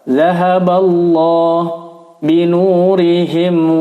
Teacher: sebelum lafaz Allah ada harokat fathah, maka dibaca lamut tafkhim, dibaca tebal.